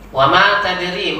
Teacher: ma panjang, ri juga panjangkan. Kalau yang panjang ini tidak boleh lebih 2 rakaat.